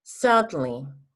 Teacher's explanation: La E invertida se llama en fonética schwa. Esa es la letra schwa. Y es una mezcla entre E y A.